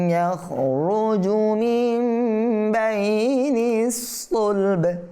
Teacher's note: জি, দেখেন, খুলিকা মিন মাইন দাফিকিন ইয়াখরুজু মিন বাইনিস সুলব। সুলব থেমেছে, এই জন্য এখানে কলকালা হয়ে গেছে